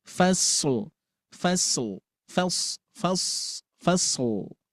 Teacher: Apalagi yang dominan di sini memang bunyi huruf shad itu harus ada sofirnya. Desisan.